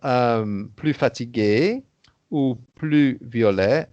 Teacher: So if it's plus fatigué ou plus violet, then you don't hear the S because there's no liaison